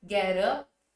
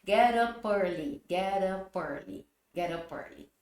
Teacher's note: O T com som de vogal vira araririroru, então get up.